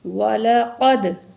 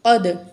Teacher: قاف کو موٹا کر کے پڑھیں گے، دال میں قلقلہ کریں گے